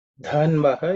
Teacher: dha is aspirated, it's the fourth letter in the tha varga.